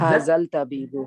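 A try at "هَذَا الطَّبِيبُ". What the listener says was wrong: जल नहीं होगा सिस्टर, हाजत तबीबु, हाँ अल लगाएंगे तो शमसी है ना, तोए उसके पर तो वो आ जाएगी, तशदीद आ जाएगी, तो हाजत तबीबु हो जाएगा, हाजल तबीबु नहीं होगा, ठीक है।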